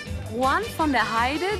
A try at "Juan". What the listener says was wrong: Also Juan von der Heide de Aragón. Juan mit Ch am Anfang.